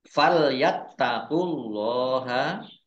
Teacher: Fal yattaqullaha taknya dibaca double ada tasdidnya. Fal yattaqullaha Allahnya dibaca tebal karena harokat di depannya dhammah.